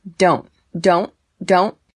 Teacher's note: there is a stop t on don't you don't hear that t there